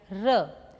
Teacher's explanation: post alveolar, blade of the tongue and just behind alveolar ridge